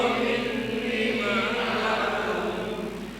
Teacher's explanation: ninya mad thobi'i dua harakat cukup dua harakat